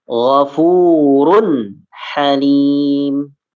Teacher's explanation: Dhammah. Tanwin dhammah. Dhammah bertemu dengan huruf ha. Ya, maka dibaca jelas.